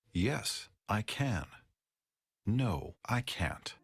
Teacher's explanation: we stress both can and can't in short answers